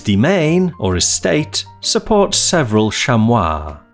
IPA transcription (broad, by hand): hɪz dɪ.ˈmeɪn ɔːr ɪ.ˈsteɪt sə.ˈpɔːts ˈse.vrəl ˈʃæm.wɑː